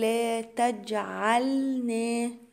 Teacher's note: أقلقل الجيم واللام عندي هنا ساكنة، خلي بالي إن أنا أظهرها كويس